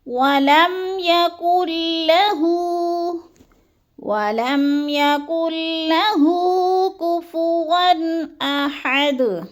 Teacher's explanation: نون ساکن کو ہم نے نہیں پڑھنا، کاف کو لام کے ساتھ ملا کر ادغام کرنا ہے. یعنی مشدد حرف کو پچھلے متحرک حرف کاف کے ساتھ ملانا ہے. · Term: ادغام بلا غنہ